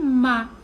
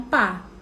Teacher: eu tenho que saber que logo eu tenho que diminuir a força dos meus lábios para só encostar para sair ma e não pá